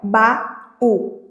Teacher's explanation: no iato a gente vai ter um encontro de duas vogais, né, na mesma palavra, só que durante a separação silábica, essas vogais vão ficar em sílabas diferentes